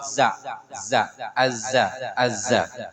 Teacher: ini dari mana keluaran makhraj nya tful lisan watfus sanay sufla dari ujung lidah dan ujung gigi seri bawah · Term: huruf Zai